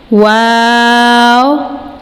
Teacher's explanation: ہونٹوں سے ادا ہوگا، دونوں ہونٹوں کی گلائی سے، واو۔ اس کے بعد ہے ہ، اس کی آواز آپ نے تھوڑی سی ہیویئر نکالنی ہے، اور اس کو اقصی الحلق سے ادا کرنا ہے، حلق کے آخری حصے سے، ہ ہ، حمزہ، یہ حرف بھی اقصی الحلق حلق کے آخری حصے سے ادا ہوگا، حمزہ۔ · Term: حروف شفویہ